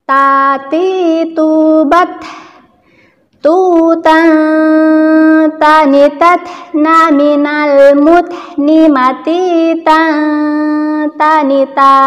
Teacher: ketika mengucapkan huruf ta sukun, maka dia ada hames atau nafas yang keluar. Karena huruf ta memiliki sifat hames.